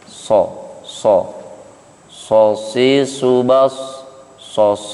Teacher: sifat sofirnya sod, ya, ini menyerupai suara angsa, ya, so si subas so, ya, seperti kalau kita mendengar angsa gitu ya, itu sifat sofir, yaitu sifat huruf yang menyerupai suara binatang.